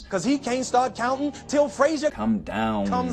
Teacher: The way he lengthens a lot of those final N and M sounds.